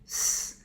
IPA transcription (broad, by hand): s